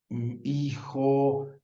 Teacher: evolucionó a otra zona de la cavidad bucal que es una zona más trasera y se volvió una Ja